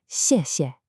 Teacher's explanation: both syllables are that sharp falling fourth tone